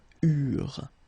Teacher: when we've got this ENT ending at the end of the plural form, so third person of the plural, you don't pronounce it, so you get eurent.